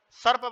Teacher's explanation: दंत्य सकार, सर्प वाला स, जिसको दांतों के बीच में से हवा निकलती है तो उसको दंत सकार कहा जाता है।